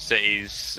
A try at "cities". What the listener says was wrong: doesn't pronounce the T's either. He just says cities as cities.